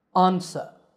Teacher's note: This is in American English. In British English, it's pronounced answer with an ah sound at the beginning.